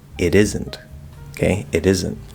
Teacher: Um but because we can connect the T to the vowel in is or isn't, um very likely, we're just going to do a flap D cuz that's the quickest, easiest way.